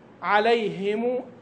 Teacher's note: وتخلص لفظ الهاء في هذه الكلمه ايضا لان كما عرفنا ان الهاء حرف خفي واذا سبق بياء وهو حرف خفي ايضا فربما لا يظهر